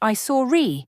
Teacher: you might hear a sound like I saw re, with an R sound added between the saw and it, to make it easier to say. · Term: Intrusion